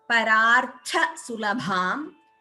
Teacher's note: tha and bha are mahapranas